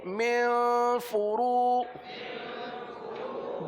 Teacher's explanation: را کو پر پڑھیں گے کیونکہ را پر پیش ہے.